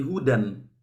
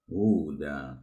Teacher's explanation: Ya, karena berhenti. Mestinya kalau wasol menjadi hudan. Tapi kalau ini tidak diwasolkan, diberhentikan, maka dibaca huda. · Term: mat iwad